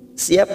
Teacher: mim sukun bertemu ba biasanya mim sukun kita baca jelas, sekarang kita dengungkan selama 3 ketuk. Bi siap masuk ke huruf ba namanya bacaan ikhfa safawi.